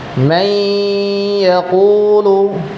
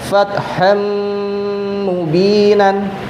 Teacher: suara nun mati atau suara huruf yang bertanwin dileburkan atau dimasukkan ke huruf setelahnya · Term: idgham bi gunnah